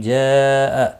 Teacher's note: مد متصل ہے، چار الف کے برابر کھینچ کر پڑھیں گے